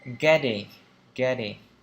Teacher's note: Hai t mà nó đi liền với nhau như này thì chúng ta đọc là âm D. Getting, getting.